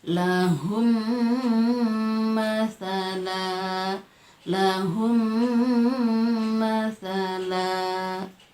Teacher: mimnya sukun bertemu dengan mim berbaris fathah, jadi kita baca lahum masala, lahum masala, jadi mimnya dibaca guna